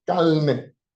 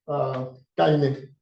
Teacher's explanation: in Caribbean, it can be produced as a lateral